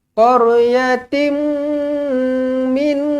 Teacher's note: Tanwin tak selari bertemu dengan mim sabdu idgham ma'al gunnah.